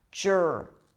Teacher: The R after a schwa takes over the schwa sound, okay? So there isn't really a vowel there.